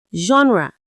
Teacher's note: Now, this is a great example because in the standard Nigerian English that your exams are based on, we pronounce it with that strong J sound at the beginning.